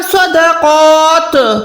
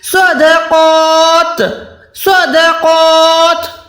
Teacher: लेकिन जब भी ता पे वक़्फ़ करेंगे तो आप आवाज को नहीं लौटा सकते क्योंकि ता कलकला में नहीं आता।